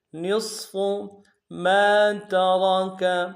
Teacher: میم کے ساتھ الف مدہ ہے، ایک اقدار میں کھینچیں گے اور را کو موٹا ادا کریں گے۔